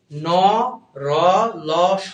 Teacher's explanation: ঠিক আছে, এবার দেখো ত, থ, দ, ধ, ন, দাঁতের সাথে লাগতেছে জিহ্বা, এই জন্য এটা দন্ত বর্ণ। ন, র, ল, স, এগুলো দাঁতের সাথে লাগতেছে না, কিন্তু দাঁত এবং মাড়ির সংযোগস্থল মানে দাঁতের মূল, দন্তমূলের সাথে লাগতেছে, এই জন্য দন্তমূলীয়।